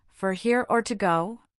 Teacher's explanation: The intonation usually rises on here and falls on go, making it a clear choice question.